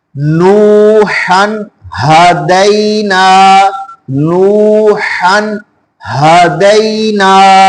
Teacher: اور جو دوسری ہا آ گئی ہے وہ سینے سے نکالنی ہے۔ اب یہ دونوں ہا ایک لفظ کے اندر آ چکی ہیں، تو ہم نے اس لفظ کو ایسے پڑھنا ہے کہ دونوں ہا جب پڑھے تو واضح پتا چلے کہ پہلے والی ہا کون سی ہے اور جو دوسری ہا ہے وہ کون سی ہے، اور ان دونوں میں جب پڑھے تو ان میں فرق کیا ہے۔